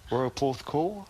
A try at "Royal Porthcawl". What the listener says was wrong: Well, you went a bit with the cowl, didn't you? Just a tad, just a tad.